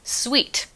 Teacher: you end it with the lingual anterior sound t